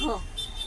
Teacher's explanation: ह चा उच्चार करून बघा तुम्ही कसा येतो बघा एकदम आपल्या घशातून हवेद्वारे बाहेर निघतो · एकदम आपल्या घशातून हवेद्वारे बाहेर निघतो ह, म्हणून याला महाप्राण व्यंजन म्हणतात.